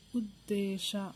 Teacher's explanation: ಉ ದಾಯತ್ವ ದೇ, ದಾವತ್ತು ದೀರ್ಘ ಶ, ಉದ್ದೇಶ. ದೇ ಅಕ್ಷರನ ಇಲ್ಲಿ ನಾವು ಒತ್ತಿ ಹೇಳಿದ್ದೇವೆ, ಹಾಗಾಗಿ ದಾವತ್ತು ಕೊಡಬೇಕು.